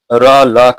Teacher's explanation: दंत मूल से आप र ल का उच्चारण करेंगे।